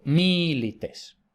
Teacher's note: En milites vemos que la segunda I es breve, por tanto no lleva el acento, sino que el acento va en la anterior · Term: esdrújula